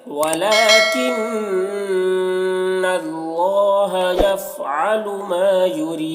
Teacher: دال میں قلقلہ ہوگا، کیونکہ دال میں وقف کر رہے ہیں تو یہ پیش جزم سے بدل جائے گا، تو قلقلہ کریں گے